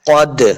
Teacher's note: قاف کو موٹا پڑھیں گے، حروف مستعلیہ سے ہے قاف، دو نقطوں والا قاف جو ہے یہ حروف مستعلیہ سے ہے، ہم نے اس کو ہمیشہ موٹا کر کے پڑھنا ہے۔